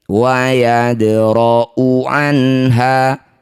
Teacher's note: Dal sukun di tengah bacaan disebut qalqalah sugrah. Pantulkan dalnya kecil saja.